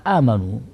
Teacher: Sehingga menurut bacaan Imam Nafi' riwayat Warsh ini, pada kata amanu, huruf hamzahnya itu mendahului huruf mat. Nah, ini bisa dipanjangkan dengan ukuran 2 harokat, 4 harokat, atau 6 harokat.